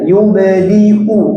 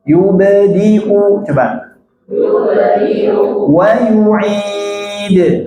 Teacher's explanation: Nah, banyak yang bacanya innahu huwa yubdi'u wa yu'id-nya hilang atau dipanjangkan. Yubdi wa yu'id, enggak dipanjangkan ya, dibaca hamzah.